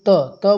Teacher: त बोलेंगे, उसमें आपकी जीभ का स्पर्श जो होता है वो आपके दांतों से होता है